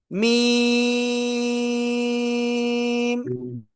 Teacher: দুই ঠোঁটের বাইরের অংশ শুকনো জায়গা থেকে চার আলিফটা নিয়ে উচ্চারণ করব।